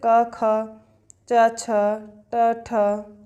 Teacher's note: जिन व्यंजनों के उच्चारण में स्वर तंत्रियों में कंपन ना हो, अघोष